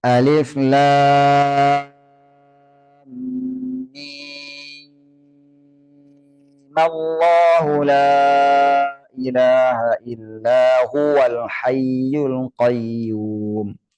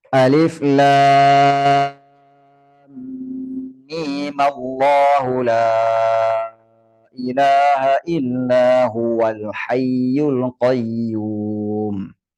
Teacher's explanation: Mimnya dibaca panjang 6, yang kedua mimnya dibaca pendek 2 harakat.